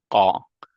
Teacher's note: when you say ga, it comes from the back of your throat.